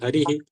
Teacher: विसर्ग के पहले इ है तो विसर्ग का ह और ह में इ लगा दिए